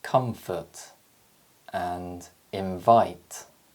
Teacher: the air is blocked between the top teeth and the bottom lip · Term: labiodental nasal